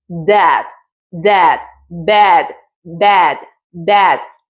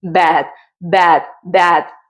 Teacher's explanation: Miramos este sonido que es una boca de E para producir una A. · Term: una mezcla de A